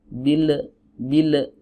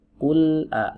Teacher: huruf lam nggak punya sifat qalqalah